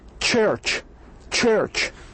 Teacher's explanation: total closure of the speech organs and air is released with a friction like ch ch ch. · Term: affricates